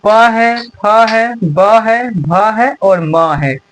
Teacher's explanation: इन सभी को हम ओठ की सहायता से बोलते हैं। जैसे देखिए प जब हम प बोल रहे हैं तो ये जो जो हमारा लिप्स है ये दोनों आपस में क्या हो रहा है? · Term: प वर्ग